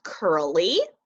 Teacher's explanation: I hear a long e sound at the end of curly